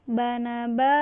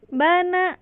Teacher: yang pertama itu dia iramanya datar. Datar. Kalau yang kedua iramanya naik.